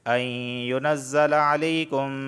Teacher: نون ساکن کے بعد حروف یرملون کا یا آیا ہے تو لہٰذا یہاں پر ادغام اور غنہ دونوں ہوگا